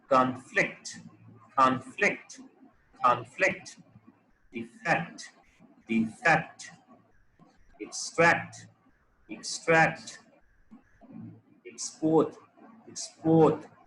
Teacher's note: Now if we look at the verbs, the second part, the second syllable is being stressed.